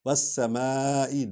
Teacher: سین سیٹی کی آواز نکلتی ہے